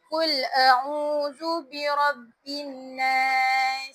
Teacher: Nun syadah wajib dengung dengan sempurna dengan dua harakat harkat. kena baca dengan kadar dua har dua harakat. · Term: wajibal qunah